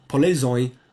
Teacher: So the shine here is oin, and the D gets pronounced as a fricative at the right place of articulation